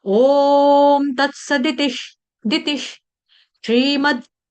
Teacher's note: ती के बाद मैंने आधा श का उच्चारण किया, क्यों किया, क्योंकि श्र, श्री, ठीक है।